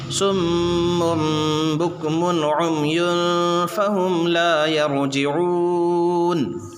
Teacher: وقف کی وجہ سے نون کے اوپر جو زبر ہے تو یہ کیسا پڑھا جائے گا؟ نون ساکن، وقف کی وجہ سے نون ساکن ہوگا